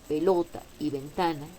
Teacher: En cambio, pelota y ventana, aunque tienen el golpe de voz en la penúltima sílaba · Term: graves o llanas